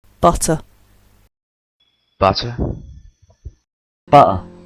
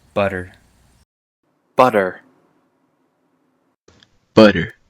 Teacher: The big difference with a word like butter, or butter, in British English and in American English butter, is that the British tend to pronounce their T's. Not always. While Americans and Canadians will pronounce T like D